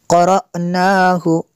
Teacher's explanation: حمزہ ساکنہ کو الف کے اوپر یا حمزہ کے اوپر جب یہ جزم آ جائے تو اس کو جھٹکا دیتے ہیں